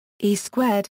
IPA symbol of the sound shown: ɲ